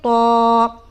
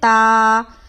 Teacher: اسے موٹا اس لیے پڑھتے ہیں کیونکہ یہ جو طا ہے یہ حروف مستعلیہ میں سے ایک ہے، جو حرف موٹے پڑھے جاتے ہیں اس میں سے ایک ہے، تو اسے ہم موٹا کر کے پڑھیں گے جیسے کہ طا، اور اسے باریک پڑھیں گے جیسے تا۔